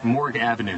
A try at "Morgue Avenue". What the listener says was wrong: It's not Morgan, honey. It's Morgue.